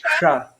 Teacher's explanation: But then this one with the S with the dot under it, it's sha, but your tongue also moves back a bit. It's like further back. So it's like one is sha, another is sha. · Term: Murdhanasha